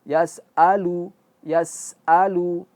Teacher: Yas yas yas yas'alu. Alirannya itu akan berhenti ketika mengucapkan si hamzahnya.